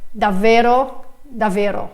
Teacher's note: just one V sound, even though I know there is a double consonant and I should pronounce it twice